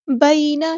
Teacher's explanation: مصدقا لما، الف مد آ گیا تو مد اصلی کریں گے. بینا، یا ساکن سے پہلے زبر ہے تو مد لین ہو رہی ہے یہاں پر، یہ یا لین ہے. بینا، ٹھیک ہے، نرمی سے موڑیں گے.